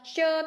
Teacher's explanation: च तालु से बोला जाता है